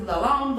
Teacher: It's the letter Va. So you have to put your tongue between your teeth and pronounce a guttural the. So it's not a th normally.